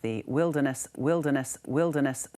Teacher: Since we are also following the British English variant, we are also supposed to silence the R in the wilderness